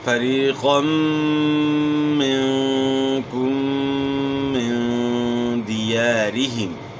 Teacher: را کی زیر کو باریک پڑھنا ہے، موٹا نہیں کرنا